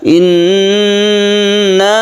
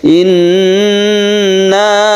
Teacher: Gunnah musyaddadah, nun yang bertasydid itu didengungkan. Inna berarti kita tahan membacanya, jangan langsung inna tapi ditahan. Inna ya sekedar 1/2 alif gitu ya.